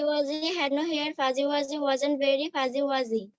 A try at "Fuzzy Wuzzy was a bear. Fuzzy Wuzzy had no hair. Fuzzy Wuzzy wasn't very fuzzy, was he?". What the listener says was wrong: এখন একবার হয়েছে রাইট, আর বাকি সব সময় তোমার একটু পজ হচ্ছে বা এলোমেলো হচ্ছে। Fuzzy wuzzy was A বিয়ার, fuzzy wuzzy had no hair, fuzzy wuzzy wasn't very fuzzy wuzzy, এভাবে বলতে হবে, ঠিক আছে?